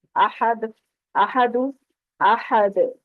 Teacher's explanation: دال حروف قلقلہ میں سے ہے، تو یہاں پر جب وقف کریں گے تو پلٹ کر آواز آنی چاہیے جب اس دال کو ساکن کریں گے.